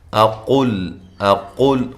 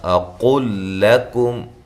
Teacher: اقل لکم، حمزہ کو تحقیق کے ساتھ، قاف موٹا ادا کرنا ہے اور یہ لام کو باریک پڑھنا ہے، لام کا لام میں جو ادغام ہے، لام کو آپ نے باریک پڑھنا ہے، موٹا نہیں کرنا